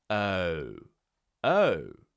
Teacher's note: You see how I'm rounding at the end? We start with the mouth slightly open, just a little bit open like we're breathing, and then we close into that round shape at the end.